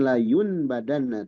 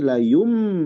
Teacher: nun sukun menjadi mim kalau nun sukun kan n jadi em ya bukan layun badanna tapi layum M. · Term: iqlab